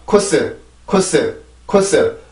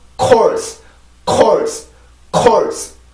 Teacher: 우리나라의 코스라고 발음을 했을 때는 그냥 코스, 코스 바로 소리가 나오지만 영어에서는 소리가 멈춘 느낌이 하나가 있어요.